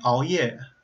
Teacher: the beginning of that is actually a pretty good velar approximant because you're bringing your tongue to the back.